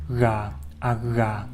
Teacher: This unusual sound is pronounced at the same spot as you would pronounce the NG sound. However, in this case, the tongue does not quite touch the palate, rather it hovers a little bit below it.